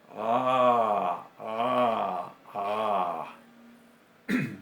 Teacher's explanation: Hacemos como si fuéramos una vocal A y detrás constringimos la garganta. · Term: ain